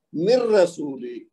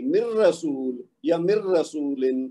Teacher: یہ نون جو ہے اس کی آواز گر جائے گی